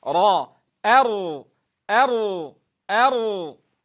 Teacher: كلا إذا دكت الأرض دك. تنبهوا إلى التمييز بين الهمزة المرققة ثم الانتقال إلى الراء المفخمة في هذا الموضع، لأنها ساكنة سبقها فتح